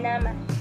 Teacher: Dan yang keempat itu bunyi apikoalveolar, yaitu bunyi yang dihasilkan oleh keterlibatan ujung lidah dan gusi atas